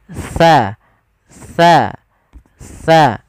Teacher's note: ujung lidah kita menempel dengan gigi sari atas. Dan jangan sampai huruf sa di sini diganti dengan huruf sin.